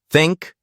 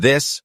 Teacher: non-native speakers practice the difference between think voiceless and this voiced place your tongue gently between your teeth and blow air for think for this vibrate your vocal cords